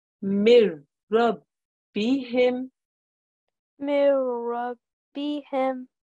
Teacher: If it's a ra mushaddad, there is no nasal sound. You read it as if the noon wasn't there.